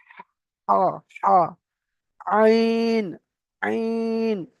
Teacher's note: আইন হা কণ্ঠনালীর মাঝখান হতে উচ্চারিত হয়, মানে গলা, কণ্ঠনালী মানে গলা, গলার মাঝখান থেকে উচ্চারণ হয়।